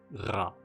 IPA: ʀa